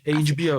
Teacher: Por essa inércia mesmo, né, do som, assim. Fazer o B, ele é vozeado, então já vou vozear antes, né? Já puxa a assimilação.